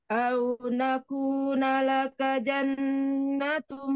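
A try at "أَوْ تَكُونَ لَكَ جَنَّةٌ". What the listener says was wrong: Bukan na tapi ta. Takuna.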